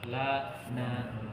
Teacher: Makhraj nun agak ke belakang dari makhraj lam.